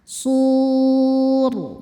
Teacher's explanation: Mad thobiinya wau sukun sebelumnya baris dhammah. Huruf yang disukunkannya huruf ro. Maka shadnya panjang. Boleh dua, boleh empat, atau enam harakat. · rnya dibaca secara tafkhim. Kenapa? Karena rnya disukunkan. Sebelumnya huruf sukun juga dan bukan ya huruf sukunnya. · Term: mad arid lukun